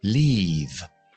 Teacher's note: Tienes que tener la lengua alta y adelantada para la i larga.